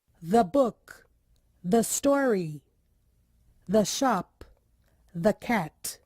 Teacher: antes de consoante aquele E tem o som parecido com o nosso A